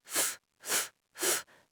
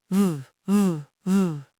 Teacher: The unvoiced F becomes the voiced V. F, f, f, v, v, v.